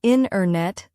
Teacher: The t sound gets softer or disappears. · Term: dropped sounds